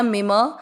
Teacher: मिम, मी मात्रा छोटी है, लंबा नहीं खींचना, और म में अमिक्स करना, मिम।